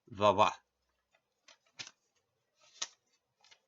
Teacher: Ra has a rougher sound similar to what you might hear in Hindi or Spanish, and va is pronounced like a mix of the English V and W sounds.